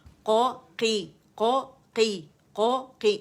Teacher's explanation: اس میں کیا ہے کہ ہم انفتاح ہے، یعنی استعالہ کے ساتھ ساتھ انفتاح ہے، یعنی زبان تالو سے جدا ہے. تو اس میں ہم جب قی پڑھیں گے تو اسے کی نہیں کریں گے، کی والا کی نہیں کریں گے. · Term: قوف